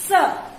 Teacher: उच्चारण करते समय जीभ दांत से छूती है, इसलिए इसको कहते हैं दंत स।